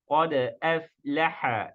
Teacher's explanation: Dibaca dengan menghapus huruf hamzah dan memindahkan harakatnya dari awal kata kedua ke akhir kata pertama. Dan cara ini dikenal dengan istilah tashilul hamzah.